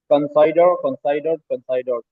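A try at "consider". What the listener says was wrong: कंसाइडर नहीं कंसीडर पढ़ना बाबू।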